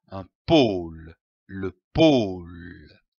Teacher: L'association de ces deux syllabes donne le mot pôle, comme un pôle. Attention ici à l'accent circonflexe. On traîne le O.